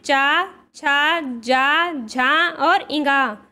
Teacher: जो चा वर्ग होता है वह तालु से उच्चारित होता है।